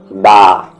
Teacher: جب الف آیا اس کے ساتھ تو 2 حرکت